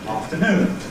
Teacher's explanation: Now this mark before the N, of course, is a stress mark, and that says that in that word the last syllable is stressed, and we make it louder, longer, more noticeable than the other two syllables of the word